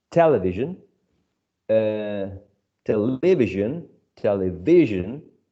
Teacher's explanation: the word television is stressed on the first syllable